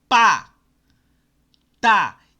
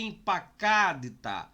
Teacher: Os dois câmetes têm som de A, porque eles estão em sílabas abertas.